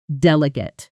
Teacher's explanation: Notice the stress falls on the first syllable.